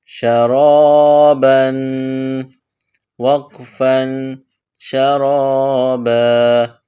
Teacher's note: اگلا حرف دیکھیے، شین زبر شا، را الف زبر را، را پر زبر ہے تو اس کو موٹا پڑھیں گے، اور را کے بعد الف ہے اور الف سے پہلے زبر ہے تو یہ حروف مدہ ہے، اس کو کھینچ کر پڑھیں گے۔ شین زبر شا، را الف زبر را، شرا، با دو زبر بن، شرابا، وقفا شرابا۔